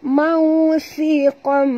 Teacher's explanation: Mau si kom, okay, tanwin baris 2 depan bertemu dengan mim, masukkan bunyi tanwin ke dalam mim disertai dengung 2 harakat idgham al-ghuna · Si huruf sa sentil ke lidah, eh, kerana makhraj sa di hujung lidah.